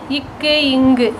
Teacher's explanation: இவ்விரு மெய்களும் நாவினது முதல் பகுதி அன்னத்தை தொடுவதால் தோன்றுது